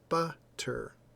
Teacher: we're putting the emphasis, our tone of voice is going up when we say that particular sound · you'll hear that my tone of voice goes up when I say the b, and then we say ter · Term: caret